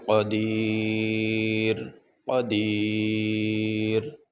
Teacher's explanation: تو وقف کرنے کی صورت میں ہم اس را کو ساکن پڑھیں گے ، اوپر جو دو پیش ہے یہ نہیں پڑھے جائیں گے،